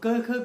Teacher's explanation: ठीक है, पहले हम कंठ से शुरू करते हैं, कंठ आता है गला, तो क ख ग हमारे कंठी स्वर हैं जो कंठ से निकलते हैं